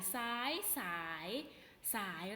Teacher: อักษรสูงมันมีพื้นเสียงเป็นเสียงจัตวานะคะ